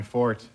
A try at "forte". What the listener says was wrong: it's not Fort it's pronounced Forte